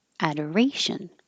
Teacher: when it's the noun, the OR is not stressed and it just changes to Ador.